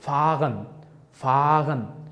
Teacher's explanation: h harfini men talaffuz qilmayapman. talaffuzi tushirib qoldirib, a harfini choʻzibroq aytishga choʻzbroq talaffuz qilyapman.